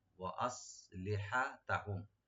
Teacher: সিন open পাতলা করে clear করে পড়বেন